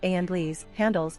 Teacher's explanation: occasionally the second syllable has been slurred so that the word is pronounced Andles, handles, without the H.